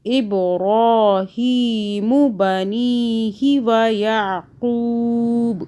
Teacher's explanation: ابراہیم، میم کو نہیں کھینچنا